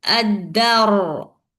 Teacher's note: Ad-dar. Okay, give the sakin for the ra and you must make the ra heavy